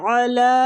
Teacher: علی عین وسط الحلق سے